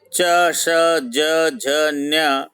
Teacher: तालू से उच्चारित होते हैं